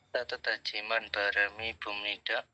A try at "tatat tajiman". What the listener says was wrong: Tatat hajiman ya. Iya kah dibaca kayak gitu kan? Kalau itu lebih enaknya kita nggak usah pakai tatat hajiman tapi lebih ke tatat tajiman. Nanti dibacanya kayak gini. Tatat tajiman.